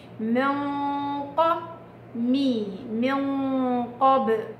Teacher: إخفاء بغنة كاملة مفخمة